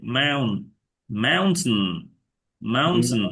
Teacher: বাট এটা টেইন উচ্চারণ হবে না, এটা নন স্ট্রেস থাকবে আর কি, স্ট্রেস পড়বে না এখানে, এই জায়গায় স্ট্রেস পড়বে।